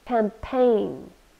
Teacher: campaign two syllables we stress the second one